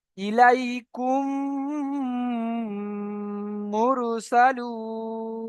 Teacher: মিম সাকিনের পরে যদি মিম আসে, তাহলে মিমকে মিমের সাথে মিলিয়ে গুণনা করে পড়তে হবে। তো এই মিম সাকিনের পরে এই মিম এসছে, তাহলে এই মিমকে এই মিমের সাথে মিলিয়ে একাধিক পরিমাণ গুণনা করে পড়তে হবে, একে বলা হয় ইদগামে স্বাভাবিক।